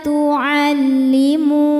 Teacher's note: Sebab ada wau sukun yang sebelumnya berbaris dhammah. Maka huruf mim panjang dua harakat. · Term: mad thabi'i dzahiri